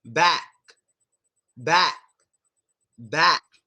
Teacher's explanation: we stop the word by closing our throats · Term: half of the K sound